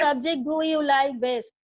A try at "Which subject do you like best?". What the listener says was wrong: Best na best টানতে হবে question mark আছে. Whenever there's a question mark, ওই টানটা আসবে. Which subject do you like best? টানটা আসবে. That is a question.